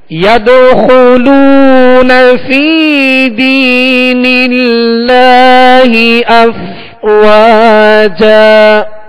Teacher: فا کو بھی ایک الف کی مقدار یعنی دو حرکت کے برابر کھینچیں گے. یا مدہ ہے اور دینی اس میں بھی یا مدہ ہے تو دو حرکت یعنی ایک الف کی مقدار کھینچیں گے اور دراز کر کے ادا کریں گے.